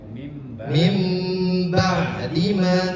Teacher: Kalau di iqlab ini ee nun itu dibaca mim